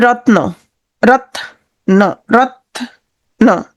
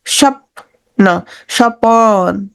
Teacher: সংযুক্ত ব্যঞ্জন ধ্বনির মাঝখানে স্বরধ্বনির আগমন ঘটবে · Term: মধ্য স্বরাগম